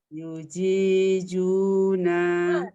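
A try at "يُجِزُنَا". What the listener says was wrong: Tidak, zu. Umi terasa sama nggak nyebutinnya? Zai, jim sama zai. jimnya juja, jiju. Kalau zainya zazizu. Sama-sama jelas ya. kejelasannya dia sama-sama jelas bacanya.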